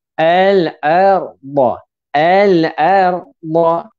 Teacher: Istiqalah sifat dia memanjang, makhraj huruf dad sepanjang tepi lidah. Makhraj huruf sepanjang makhraj huruf berpanjangan di bahagian tepi lidah.